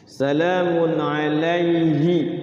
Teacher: huruf Ain itu dari tenggorokan ya yang enam huruf itu izhar halqi